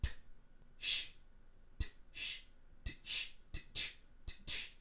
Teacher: And then the next symbol is the TH sound, and that's just a T and a sh, exactly what you would think. So when you say ch, you're actually making a t, sh, t, sh, t, sh, t, ch, t, ch, putting it together, and that's the sound that you're making.